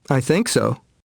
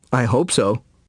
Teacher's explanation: notice the stress on the verb in short answers with so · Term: sentence stress